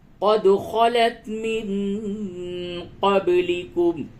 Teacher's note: دال میں قلقلہ ہوگا، دال ساکن ہے، قلقلہ کیجئے